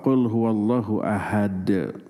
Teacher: Kalau dibaca waqaf qul huwallahu ahad, diwaqafkan ada qalqalah, dalnya mati.